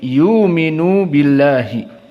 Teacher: maka dibaca dengan diganti waw karena sebelumnya dhammah. Yu'minun jadi yuminu.